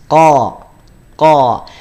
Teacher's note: ada di Pangkal lisan naik ataupun nyentuh dengan langit-langit atas